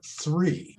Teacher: So with that, I can stay and look in front of the mirror and see if my tongue exits my mouth and it's stuck between my top teeth and my bottom teeth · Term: TH sound